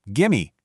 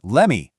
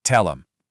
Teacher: We are entirely dropping those hard ending consonant sounds of the first word. We lose the v and give the t and let and the th in them.